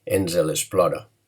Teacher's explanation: Fixeu-vos que he pronunciat ens l'explora perquè amb una E entre la S i la L, perquè quan hi ha tres fonemes consonàntics, la manera de pronunciar en el nostre parlar és afegint una E que no escrivim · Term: coixinet fonètic